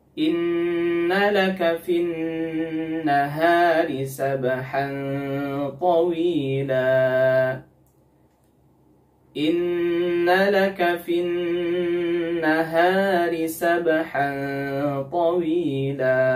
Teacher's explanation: Di sini ada nun yang bertasydid, ada 2 nun yang bertasydid ya, yaitu pada kata inna dan fin nahari. Nah, ghunnah pada nun yang bertasydid ini merupakan ghunnah yang paling sempurna atau akmal ma takun, sehingga panjangnya juga 2-3 harokat.